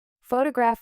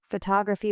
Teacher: Photograph with stress on foe. Photography with stress on tog. Photographic with stress on graph.